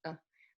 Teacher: it's tiny it's barely there you don't really have to move your mouth and it's not stressed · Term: schwa